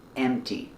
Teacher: Don't pronounce the P sound. It's M T.